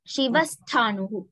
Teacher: Visargam followed by the sakara will be sa.